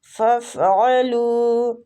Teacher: علو عین حلق سے، لو وہ مد ہو رہا ہے، ٹھیک، تو وہ مد کو ہم کھینچتے ہیں تھوڑا سا، ایک الف جتنا۔